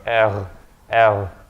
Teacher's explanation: the way the French pronounce it is very far back in the throat